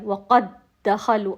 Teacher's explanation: پھر جو ساکن ہے اس کی صفت ختم ہو جائے گی، اور وہ اصل میں یہ 3 دال ہیں، پہلا ساکن ہے اس کی صفت ختم ہو گئی، قاف کے بعد ہم نے دال مشدد کو ادا کیا، وقد دخلوا، اصل میں وہ بھی اس میں مرج ہو گیا ہے، جب ادائیگی کر رہے ہیں تو وہ اس میں مرج ہو گیا ہے۔ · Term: ادغام